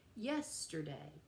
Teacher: we have three syllables with a stress on the first syllable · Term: dactylic